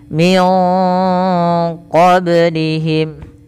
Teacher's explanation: suara nunnya disamarkan ke qof maka terdengar bunyi Eng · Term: Ikhfa